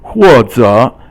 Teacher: 或 is fourth tone, and 者 is third tone.